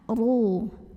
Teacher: Wa'ashiru. Huruf ra dibunyikan secara tafkhim sebab ro-nya berbaris dhammah. Cara membacanya kita tebalkan, pangkal lidah kita angkat